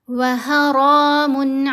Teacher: وَحَرَامٌ، ح کو گلے کے درمیان والے حصے سے ادا کیا، اور را کو ہم موٹا پڑھیں گے، اوپر کھڑا زبر ہے، را کو لمبا بھی کریں گے۔ وَحَرَامٌ، میم کے اوپر 2 پیش ہیں، آگے عین ہے، یہاں ہم نے اظہار کرنا ہے۔